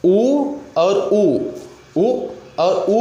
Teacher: बोला जा रहा है तो ओठ आपका गोल हो रहा है। री, अगर री बोल रहे हैं तो दांत के पिछला वाला हिस्सा जिसको हम यहाँ पर बोले हैं कि मूर्धा है, यह दांत है।